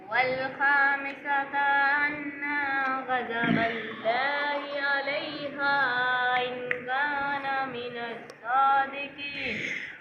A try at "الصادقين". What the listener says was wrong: صادقين پورا اس طرح لمبا کریں قین کو. یہ حروف مدہ ہے. حروف مدہ پہ وقف عارض جو ہے وہ مد عارض وقفی.